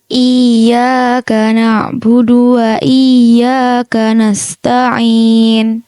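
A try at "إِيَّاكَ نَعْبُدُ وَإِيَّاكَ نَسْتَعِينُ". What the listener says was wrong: Iya.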